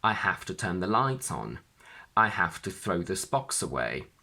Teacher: When the object is an explicit noun and it appears before the particle, the stress falls onto the noun.